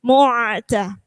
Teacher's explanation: Jadi ketika ada ain disukun itu tidak boleh terputus.